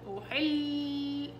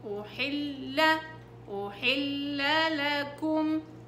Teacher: ما تشديش على اللام الأولى، أحل، لا، أحل، أحل لكم، وانتبهي لإتمام الحركة.